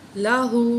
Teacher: قال، قاف کو موٹا کر کے پڑھیں گے، قال لہو، لام کے اوپر زبر ہے، ہا کے اوپر الٹا پیش ہے، تو ہم ہا کو ایک الف کے برابر کھینچ کے پڑھیں گے